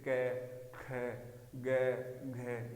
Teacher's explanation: जो कै वाला वर्ग है वो कंठ से बोला जाएगा